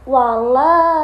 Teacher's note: di bagian lam wala itu ada mad thobi'i. Alif dibaca dua harakat atau dipanjangkan